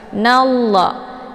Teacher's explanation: Innallah, nallah di sini ada alif lam, namanya alif lam asy-syamsiyah karena sesudah alif lam terdapat huruf syamsiyah yaitu la. Cara bacanya nunnya langsung dileburkan ke dalam huruf la ataupun dimasukkan. Nallah. Dan untuk alif lamnya tidak lagi dibaca. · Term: idgham syamsiyah